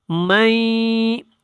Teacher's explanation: آواز کو ہم نے ناک میں لے کے جانا ہے، تو یہاں پہ غنہ کرنا ہے